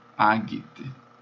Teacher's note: o G é sempre duro, como em gato, guerra, mesmo diante de E e de I.